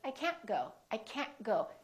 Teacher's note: you need to hold the T at the end to have a more American accent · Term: hold that final T